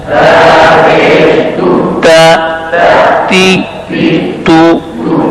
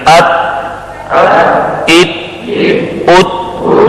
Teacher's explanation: शिद्दत की सिफत इसमें लाजमी है, ख्वाह ता पर जेर हो, जज़म हो, शद हो, हर हाल में ये लाजमी सिफत है, इसके साथ रहेगी।